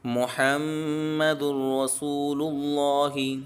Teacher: اللہ کے لام کو موٹا پڑھیں گے